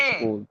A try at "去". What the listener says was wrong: ये छू नहीं आना, ये छी आना, छी